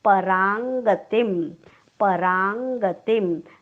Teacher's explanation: क वर्गातलं सर्वात शेवटचा अनुनासिक क ख ग घ ङ आपण अनुस्वाराच्या ऐवजी उच्चार करणार आहोत